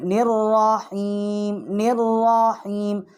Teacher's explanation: اور را جو ہے یہ مشدد ہے، نون جو ہے ہم را کے ساتھ تشدید کر کے پڑھیں گے